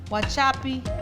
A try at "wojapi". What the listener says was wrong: Why you want to put cha in there? It's wojapi. Wojapi.